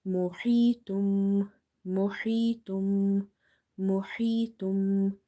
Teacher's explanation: Before ya sakina, you have kasra, so you will stretch this ya because this ya is your madda letter here. Madda letters are such letters which we read by stretching them up to 1 alif.